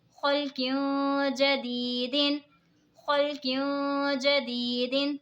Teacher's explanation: दो ज़े की तनवीन के बाद हुरूफ़े इक़फ़ा का जीम आ रहा है तो इक़फ़ा होगा यानी गुन्ना करके पढ़ेंगे। या साकिन से पहले ज़ेर है तो या मद्दा होगा, इसीलिए इसको खींच के पढ़ेंगे।